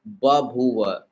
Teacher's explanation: According to Grassmann's law, when followed by another aspirated sound in the word, the initial aspirated sound becomes unaspirated. So babuva shows how the first ba loses its aspiration to become ba, reflecting the rule.